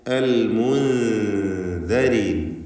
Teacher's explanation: സാക്കിനത്ത നൂനിനെ ഇഖ്ഫ ഹഖീഖി നൽകി മറച്ചു മണിക്കണം. മണിക്കലിൽ തർക്കീഖാണ്, നേർപ്പിച്ചുകൊണ്ടാണ് മണിക്കേണ്ടത്.